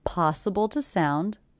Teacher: the word to is definitely reduced to the schwa